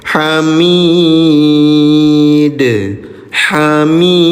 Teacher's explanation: Ketika dalnya disukunkan terjadi hukum tajwid namanya qalqalah. Ya, cara bacanya PTL pantulkan.